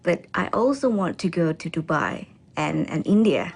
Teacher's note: pitch rising until she ends with a level voice for dubai she uses a rising intonation to express the afterthought india